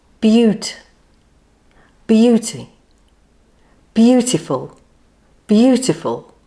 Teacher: It has 3 syllables with the stress on the first syllable.